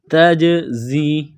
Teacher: زا میں سیٹی کی آواز پیدا کریں گے